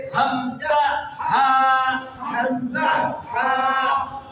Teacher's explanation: এক নাম্বার মাখরাজ হলকের শুরু হইতে